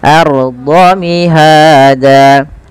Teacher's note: tebalkan ra sukunnya karena ia ra tafkhim, yang dimana ra sukun didalu dengan fathah.